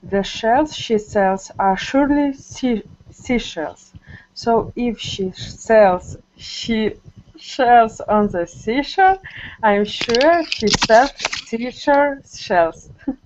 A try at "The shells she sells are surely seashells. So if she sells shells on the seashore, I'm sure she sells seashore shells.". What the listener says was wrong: Yeah, it's a workout, but well done.